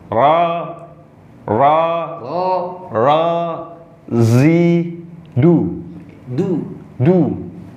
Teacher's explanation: Huruf ro-nya sudah bagus, tidak dimonyongkan bibirnya.